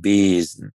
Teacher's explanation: Wir können lang geschlossen E sagen, wie in Besen.